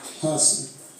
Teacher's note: in the word person the first syllable is stressed